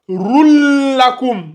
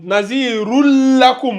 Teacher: c'est la liaison mais sans le nazillement